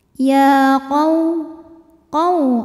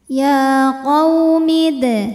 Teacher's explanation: Sebab ada waw sukun didahului baris fathah, maka dibacanya cukup kita lembutkan. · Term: huruf lin